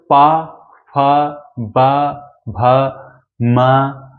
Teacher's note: ओष्ठ व्यंजन के बारे में अगर हम बात करते हैं तो ऐसे व्यंजन जिनको बोलते समय हमें ओठ की जरूरत पड़ेगी